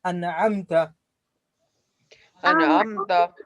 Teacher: Izhar. So you don't make any gunna, you don't make any mad